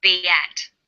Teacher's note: says be at. Be ends with the vowel sound e, and at begins with vowel a. Linking these words together with the y sound, we have be at. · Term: y linking